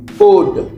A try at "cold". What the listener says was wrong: Le L, faut le prononcer. Cold.